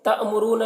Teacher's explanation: للناسی نون کو میں غنہ کریں گے اور یہاں پر الف مدہ ہے نون میں. تأمرون یہاں پر حمزہ ساکنہ ہے, اس کو جھٹکا لگا کر پڑھیں گے